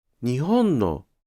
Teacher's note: Sometimes, “日本の” (nihon-no) is pronounced LHLL instead of LHHH.